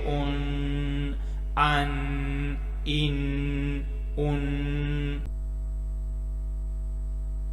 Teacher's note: یہ حلق سے نکلنے والا حروف حمزہ ہے، اس کے اوپر بھی 2 زبر ہیں، تو یہاں بھی تنوین غنہ کریں گے ہم۔